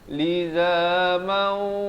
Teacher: dua harakat berserta dengung